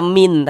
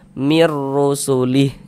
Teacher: E bunyi nun sukunnya dimasukkan ke huruf ro. Melebur ke huruf ro. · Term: idgham bila ghunah